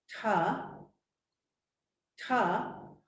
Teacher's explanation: where my tongue is touching the back of the front teeth that's dental